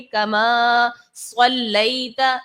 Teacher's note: स्वाद हुरूफ मुस्तालिया में से है, इसको पुर पढ़ा जाएगा